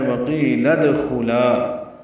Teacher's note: دال ساکن پہ قلقلہ ہے، خا پر ہے، لا الف مدہ ہے.